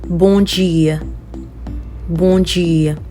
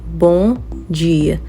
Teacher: So in Portuguese, if M is ending a word, you don't pronounce the M. And then it'll turn out to be a bit nasal